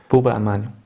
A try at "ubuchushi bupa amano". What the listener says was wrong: Bupa, no, not buba. Bupa. Amano.